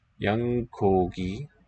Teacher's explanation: After yang, the k kogi is going to voice gogi.